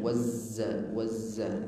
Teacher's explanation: Wazza, penahanan di huruf zai. Ada sifat safir namanya, mendesis ya, mendesis suaranya di saat menahan atau penahanan huruf zai. Wazza, wazza, ada sifat safir, mendesis, tajam suaranya.